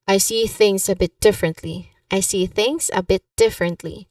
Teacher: here pronunciation wise you emphasize on differently